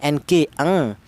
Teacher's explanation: ifa adna itu rendah yaitu justru dengungnya lebih dominan daripada samarnya. Ini untuk yang ifa adna bunyi vokalnya ng eng ng hurufnya ada dua yaitu huruf qof dan huruf kaf ya.